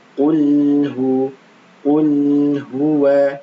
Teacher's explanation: lam jangan sampai diqalqalahkan ya. Qul huwa, jangan sampai seperti itu.